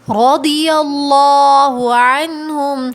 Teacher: را کے اوپر زبر ہے نا تو ہم اس کو موٹا پڑھیں گے